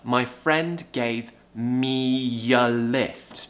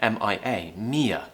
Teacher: begins with a vowel we're going to use a consonant and the consonant we're going to use is a yeah sound to join them together